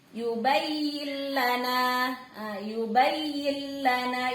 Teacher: Artinya lamnya melebur tapi tidak berdengung, nggak boleh lama-lama. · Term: bila gunnah